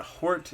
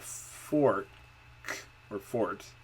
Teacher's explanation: So actually you would expect that she might be using an F where there's an H instead of the other way around, using an H instead of an F that's very strange. It's backing instead of fronting, which is not a typical delay.